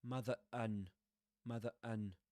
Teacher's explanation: Anyway, in between there's a pause, right? There's a pause, so that's why he doesn't produce that r sound, the linking r.